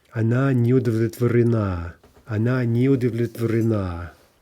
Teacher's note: we're going to get the end stress. It's going to jump to the а.